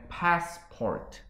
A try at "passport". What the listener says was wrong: 이게 패스 스이 발음이 되게 많이 나는데 이거 없애야 됩니다.